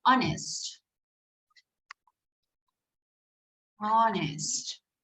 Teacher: So in this word, the letter H doesn't have a sound. It starts with a vowel sound